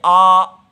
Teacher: आ बोलते हैं तो मुंह खुल जाता है · मुंह सारे मुख के अवयव दूर की तरफ जाते हैं, तो ये विवृत प्रयत्न है